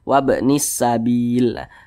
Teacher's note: Bil ini dibaca panjang ini namanya mad arid li sukun.